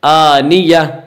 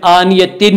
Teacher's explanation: تین، آنیتن میں گول، آنیتن میں گول تا ہے، اس لیے گول تا کو حالت وقف میں ہائے ساکنہ سے بدل کر پڑھیں گے ، آنیہ، حالت وقف میں آنیتن نہیں پڑھیں گے، آنیہ، گول